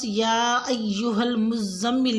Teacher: آیت نمبر 1 میں لفظ یا ایہا المزمل میں یا کی مد کو 3 سے 4 الف کے برابر لمبا کھینچیں